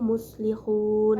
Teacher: Pada kalimat muslihun terdapat hukum bacaan mad arid disukun karena terdapat huruf mad jatuh sebelum huruf yang diwakafkan, dibaca panjang sebanyak 2-6 harokat